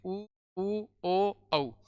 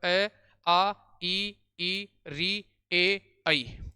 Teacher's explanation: वे स्वर जिनका उच्चारण करने पर होठों की आकृति गोल हो जाती है वो तो वर्ताकार स्वर कहलाते हैं